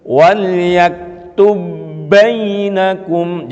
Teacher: Dalam hal ini contohnya huruf ba, yaitu di ayat-ayat pertama itu baris kedua, wal yaktub bainakum katibum bil adl, wal yaktub bainakum, itu idgham mithli, ada ba bertemu dengan ba, nggak usah ba-nya itu dikolkolahkan tapi langsung dimasukkan pada ba setelahnya